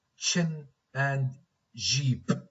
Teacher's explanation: these sounds are made by a brief stopping of the airstream with an obstructed release which causes some friction the initial sounds in chin and jeep okay okay [Music] which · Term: affricates